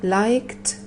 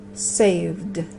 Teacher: Son dos pronunciaciones distintas, no sé si lo podéis apreciar, la primera es con una T, la segunda es con una D.